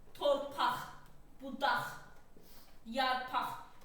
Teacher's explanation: Əgər sözün sonu q ilə bitirsə sən rahat şəkildə o sözü x kimi tələffüz eləyə bilərsən. · sözlərin sonu q ilə bitirsə, bu x kimi tələffüz olunacaq.